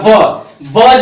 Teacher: ब जो है हमारा होठों से निकल रहा है